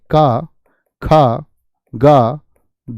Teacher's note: स्पर्शी व्यंजन है, जीभ का सिर्फ स्पर्श मात्र होता है